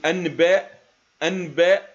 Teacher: أما تفسير حكم الإقلاب، لأن نطق النون الساكنة وبعدها باء يكون به عسر وكلفة في النطق، وبالتالي إذا جربت ذلك بنفسك، إذا أحببت أن تقول أنباء أنباء، ستجد أن هناك عسر في نطق النون وإخراجها بشكل واضح، ولذلك تيسيرا للنطق تم قلبها إلى ميم، لأنه متجانس مع حرف الباء ومخرجهما واحد، ولأن الميم أساسا يتشارك مع النون في جميع الصفات كما سنعرف لاحقا عندما نتحدث عن صفات الحروف.